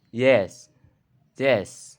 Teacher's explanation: voice palatal glide or voice palatal approximant